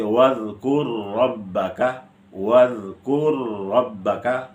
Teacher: را کا را میں ادغام مثلین